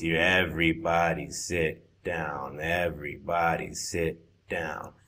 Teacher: on the word, sit, you're saying seet, and there's uh, the vowel is wrong.